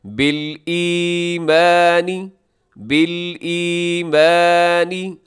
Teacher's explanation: بالایمانی، اسے ایمانی نہ پڑھیے گا بلکہ یہاں یا مدہ ہے، آپ اسے سٹریچ کیجیے گا، اسے کھینچیے گا۔